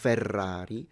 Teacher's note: when you have double r is a stronger r sound